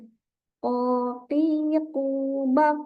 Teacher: pangkal lidahnya kita naikkan sehingga tercipta suara yang tebal